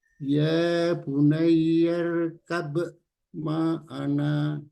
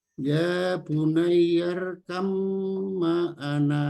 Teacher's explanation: karena ba sukun ketemu mim, yaitu mim tasjid, ini merupakan idgham mutajanisain, yaitu dua huruf yang makhrajnya sama tetapi sifatnya berbeda.